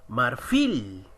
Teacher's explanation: Marfil, profesor, la mayor fuerza de voz está en la última. Sí, terminó en consonante, sí, pero esa consonante no es N ni S, ni tampoco vocal, es una L.